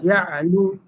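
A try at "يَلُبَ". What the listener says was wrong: ইয়ালু ইয়ালু ইয়া বলে ধাক্কা দেওয়া যাবে না, ধাক্কা দিলে কলকলা হবে অথবা আর একটা হামজা তৈরি হবে। শক্ত হবে কিন্তু ধাক্কা হবে না। ইয়ালু বা ইয়ালু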